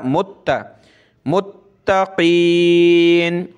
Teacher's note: मीम को ता के साथ मिलाकर ता को सख्त करेंगे तशदीद की वजह से